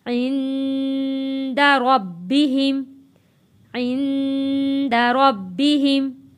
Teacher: نون ساکن ہے، نون ساکن پہ ہم نے غنہ ادا کرنا ہے۔